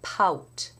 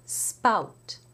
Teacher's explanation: can be heard when they're in word initial position for example in the word pout you hear a h pout but if you were to put an S in front of that word you would get spout with no puff of air